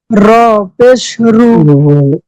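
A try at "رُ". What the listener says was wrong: রটা একটু মোটা র পেশ রু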